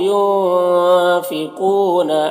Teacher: قاف حروف مستعلیہ میں سے پر پڑھیں گے